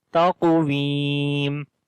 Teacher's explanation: On the qaf we read heavy sound, and also we make qalqala, which is the weak qalqala